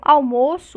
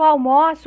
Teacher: almoço, o timbre fechado, designa um nome no português, enquanto almoço, com o timbre aberto, um verbo